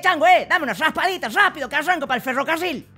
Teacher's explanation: pronunciación vibrante alveolar múltiple suavizada y arrastrada de la r